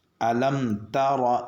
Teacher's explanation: را کو پر پڑھتے ہوئے نہ تا کو پر پڑھیں گے نہ کاف کو پر پڑھیں گے۔ بعض مرتبہ لوگوں کو میں نے دیکھا کہ الم طور را کو بھی پر پڑھتے ہیں یا کاف کو بھی پر پڑھ دیتے ہیں، الم تر کیف اس طریقے سے پڑھتے۔